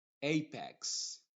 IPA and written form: ˈeɪpɛks (Apex)